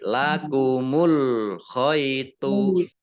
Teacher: dibaca t tapi tebal gitu ya · baknya bak sukun bacaan qalqalah dibaca memantul ditampakkan pantulannya ya. Jadi lakumul khaitu abyadu.